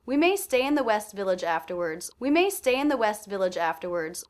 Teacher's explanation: I definitely heard stay as being the most stressed.